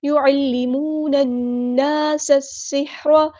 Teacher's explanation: سین کو ہم نے سین کے ساتھ ملانا، لام کے ساتھ نہیں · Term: لام شمسی